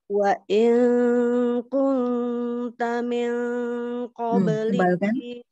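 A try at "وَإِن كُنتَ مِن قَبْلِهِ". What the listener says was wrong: Ikfa yang bertemu dengan huruf-huruf isti'la, kof misalnya ya, itu tebal ikfanya. Miong, nah, tidak ming, miong qobli. Ya, sedikit lagi naikkan lagi. Miong, miong qoblihi. Huruf mimnya jadi terdengar agak miring. Jangan mi, mi tetap mi ya. Wa in kunta min qablihi laminal ghafilin.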